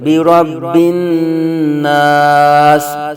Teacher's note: بی ربن نا سین زیر سی، بی ربن ناسی، آگے وقف سین کو ساکن کر دیں گے۔ حروف مدہ کے بعد عارضی سکون ہو گیا یہ سین، تو پھر یہاں مد عارض ہوگی، 2 اڈائی 3 الف تک کھینچ کے پڑھیں گے